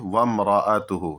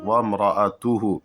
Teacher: اور را کو موٹا پڑھیں گے کیونکہ را پر زبر ہے، اور حمزہ اس کے بعد ہے، اس کے بعد اسی کو وضاحت کے ساتھ پڑھیں گے وامرأتہ، صاف صاف وامرأتہ۔